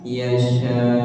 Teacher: di sini kebetulan wakaf ya Jadi boleh sampai enam harkat dan ketika wakaf itu hamzahnya jangan dihilangkan jangan dibuang · Yasya ada tekanan di akhirnya